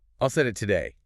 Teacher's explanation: Your voice goes up on the stressed word, and then it just crashes down to the bottom of your range. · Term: the falling pattern